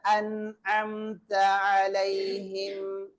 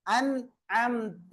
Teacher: நூனை தெளிவாக வெளிப்படுத்தி ஓத வேண்டும்